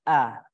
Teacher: Karena huruf hamzah ini ada tekanan, nama sifatul hurufnya syiddah, kuatnya pada tumpuan huruf, maka dia bunyi hamzahnya a.